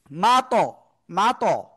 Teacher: জিহ্বার আগা উপরে দিয়ে দাঁতের গোড়ায় লাগিয়ে। তো ওই জায়গায় একটু জোরে লাগবে। ঠিক আছে? মা, ত, মা, ত একটু মোটা আওয়াজও হবে। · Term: কলকলার